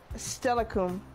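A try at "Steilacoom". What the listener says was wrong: It's a U, not an O.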